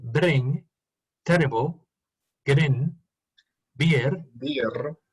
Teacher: Es beer, muy pronunciada la R, ¿no? porque es rolling, es a rolling R.